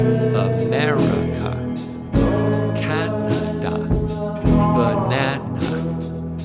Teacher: The sound you're making is called a schwa, a neutral vowel sound, and it's the most common vowel sound in English.